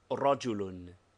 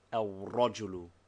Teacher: the lam has dropped its sound but not its form